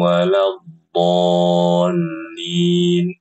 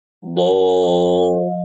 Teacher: Dibaca 6 harokat. Jangan dibaca 2 harokat.